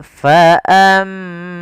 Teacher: ada mim berharakat tasydid, kita baca dengan bacaan gunah. Caranya adalah menahan suara mimnya.